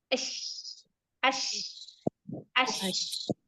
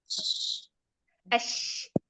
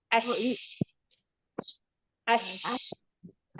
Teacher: Sebenarnya shh, bukan ush. Ash. Jadi diusahakan tidak dibantu bibir. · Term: huruf shin